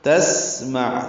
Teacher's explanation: سین ساکن اس میں سانس جاری رہتی ہے. عین ساکن یہ اظہار ہوتا ہے، قلقلہ نہیں ہوتا.